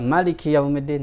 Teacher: Boleh juga loh dibaca Maliki Yaumiddin, mimnya pendek.